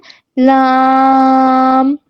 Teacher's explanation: لام کہاں سے ادا ہوگا کہ زبان کی جو کروٹ ہے، اس کی جو سائڈیں ہیں، طرف اللسان جو ہے وہ نوک تک، اوپر کے ضاحک سے لے کے ثنایا تک لگے، ٹھیک ہے، ایک داڑھ اور 3 دانتوں کے ساتھ لگے تو لام ادا ہوتا ہے۔